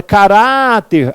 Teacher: Quando eu falo a palavra caráter, a penúltima é a mais forte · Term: paroxítona